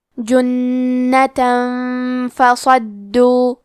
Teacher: آخر میں تا پہ تنوین زبر ہے، پھر حرف الفاء آتا ہے کلمت فصدو. فا حروف الاخفاء میں سے ہے تو ہم یہ حکم کو غنہ کے ساتھ ادا کریں گے